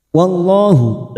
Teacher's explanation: lam jalalah yang didahului fathah kita baca tafkim